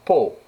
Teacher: Ou bien porte, une syllabe fermée, donc on utilise la voyelle ouverte. Et peau, une syllabe ouverte, alors on utilise la voyelle fermée.